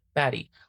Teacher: turning into the alveolar tap ra, articulated in the same place as T and D